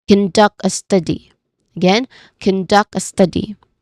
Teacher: We say conduct a study again conduct a study with natural rhythm. The second syllable of conduct and the first syllable of study are stressed